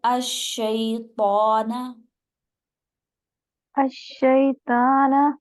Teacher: تو کو موٹا رکھیے، حروف مستعلیہ میں سے ہے